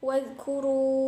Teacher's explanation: Pada lafaz ini terdapat hukum bacaan mad jaiz munfasil sebab ada mad bertemu dengan hamzah di lain kata. Panjang bacaannya 2,5 alif atau 5 harokat.